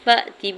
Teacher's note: فا کی زبر کو حمزہ ساکن کے ساتھ ملاتے ہوئے جھٹکا دیں گے، تا کی زیر کو بغیر کھینچے ہوئے ادا کریں گے۔